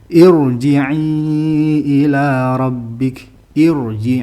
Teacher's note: ini kalau kasrahnya itu bukan kasrah asli ya dibaca tafkhim